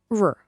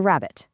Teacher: R is a nice short tap.